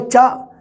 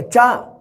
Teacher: ਸ਼ਬਦ ਦੇ ਅੰਤ ਵਿੱਚ ਨਹੀਂ ਮਿਲੂਗਾ ਤੁਹਾਨੂੰ ਕਦੇ ਵੀ, ਦੇਖ ਲਿਓ ਕਦੇ ਵੀ ਅੰਤਲੀ ਸਥਿਤੀ 'ਚ ਨਹੀਂ ਹੁੰਦਾ। ਹਾ ਵਿਚਕਾਰ ਤੇ ਅੰਤਲੀ ਸਥਿਤੀ ਵਿੱਚ ਸੁਰ ਦਾ ਰੂਪ ਧਾਰਨ ਕਰ ਜਾਂਦਾ ਹੈ।